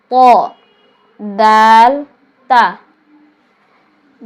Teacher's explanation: জিহ্বার আগা সামনের উপরের দুই দাঁতের গোড়ার সঙ্গে লাগিয়ে